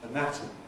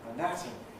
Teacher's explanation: because this syllable nat is stressed in anatomy it keeps a strong vowel